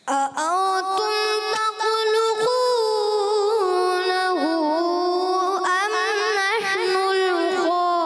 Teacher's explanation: میم میں اظہار شفی, وہاں غنہ نہیں کرنا · غنہ بھی پورا کرنا ہے اور تخلقو کو ایک الف سے زیادہ بھی نہیں